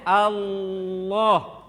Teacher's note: Kalau lam tebal Allah, pangkal lisan naik.